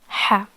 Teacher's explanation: so it's made when the middle part of the throat becomes narrower when there is constriction and there is no vibration while pronouncing this sound